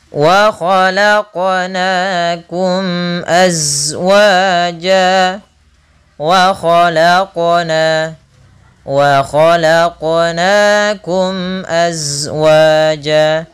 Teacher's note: mim mati bertemu hamzah, yaitu kita namakan idhar syafawi, suara mimnya jelas